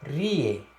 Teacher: Palavra série, perceba na sílaba rie que quando eu pronuncio ó, rie, não existe influência nasal aí na pronúncia dessa palavra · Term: ditongos orais